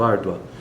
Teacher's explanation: A sílaba tônica, ou seja, a sílaba mais forte que nós pronunciamos com mais força ainda em toda a palavra é ar. Então, árdua, tanto que é acentuado, árdua.